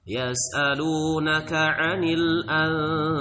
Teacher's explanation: Jadi bukan dibaca idhar, jangan anil anfal jadi nunnya harus disamarkan ya. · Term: Ikhfa